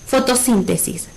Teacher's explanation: Ahora, fotosíntesis, ¿será una palabra aguda, grave o esdrújula? Como está acentuada en la antepenúltima sílaba, ¿sí? Fotosíntesis es una palabra esdrújula